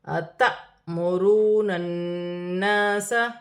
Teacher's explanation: الف پر جزم کی حرکت ہے، جھٹکے کے ساتھ پڑھا جائے گا